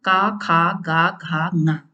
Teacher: का वर्ग, हा और विसर्ग का उच्चारण स्थान कंठ।